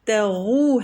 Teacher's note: تا کو ہم ترقیق سے پڑھیں گے اور غین تفخیم ہے